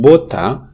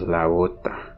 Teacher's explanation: But then, because the word is grammatically feminine in Spanish, when you put the definite article la, suddenly you get a vowel before the initial word initial ba, and the word initial ba becomes intervocalic in the phrase. Therefore, the pronunciation becomes la bota.